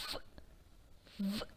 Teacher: You can hear hissing sound and a friction caused between the lip and the teeth.